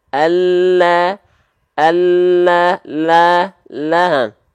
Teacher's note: Nah, huruf lam itu kan kita punya samping lidah nih, pinggir lidah. Huruf lam itu keluar dari tepi lidah bagian depan yang kiri, tepi lidah bagian depan yang kanan, dua-duanya menyusur sampai ke ujung lidah, disentuhkan ke langit-langit kita